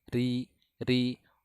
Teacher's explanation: Huruf ro bisa menjadi tebal ketika fathah ataupun doma. Nah, ketika baris bawah huruf ro maka akan tipis, sempurna. Tidak boleh ada penebalan sedikit pun